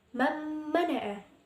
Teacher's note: bacaan Mbak mana disitu ada Bun sukun bertemu dengan huruf mim Jadi kita itu bacanya memasukkannya atau mentasydidkan nya secara mendengung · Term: Idgham Bighunnah